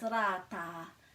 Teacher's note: we've got two of these a, and they're both a little bit longer, so they're a, ra, ta, and rata has got a little bit of a roll here as well, so it makes it a little bit trickier.